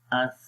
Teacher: آواز مخرج میں جاری ہو رہی ہے، سانس جو ہے وہ بھی جاری ہو رہا ہے اور آواز بھی جاری ہو رہی ہے۔ اس تو یہ سانس اور آواز یہ دو الگ چیزیں ہیں، ٹھیک ہے، سانس کا جاری ہونا اور آواز کا۔ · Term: رخاوت